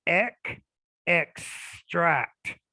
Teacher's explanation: the x sound in many cases it represents a k and an s so it's a consonant cluster